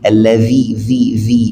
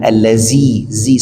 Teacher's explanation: Kalau zal itu wajib kita keluarkan ujung lidah ya sedikit